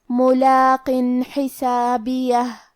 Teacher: ہم یہاں تنوین ظاہر کریں گے اور اسے نون ساکن پڑھیں گے اور بغیر غنہ سے یہ حکم کو ادا کریں گے۔ ملاق حسابیہ، کلمت حسابیہ میں حرف الحا کی ادائیگی حلق کے درمیان والے حصے سے ہے، آخری میں ہمیں ہا کو ظاہر کرنا ہے۔